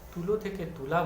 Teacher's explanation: এগুলো কিন্তু দেখো প্রতিটা ক্ষেত্রে তুলো থেকে তুলা বললে দেখো প্রথম স্বরধ্বনিটি ঠিক আছে, কিন্তু পরবর্তী স্বরধ্বনিটি পরিবর্তিত হচ্ছে, ওকার থেকে আকার হয়ে গেছে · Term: প্রগত স্বরসঙ্গতি